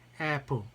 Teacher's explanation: 아래턱을 완전히 내려서 앞쪽에서 나는 소리는 apple 할 때 에 이 소리죠